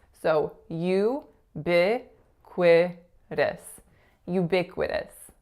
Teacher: As you can hear, the strongest syllable is that second syllable, that lax I sound.